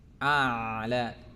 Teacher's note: hamzahnya itu tempat keluarnya berada di pita suara ya, tenggorokan bagian bawah. Pita suara itu letaknya di tenggorokan bagian bawah ya, di atas cekungan dada itu ada, di situ namanya pita suara.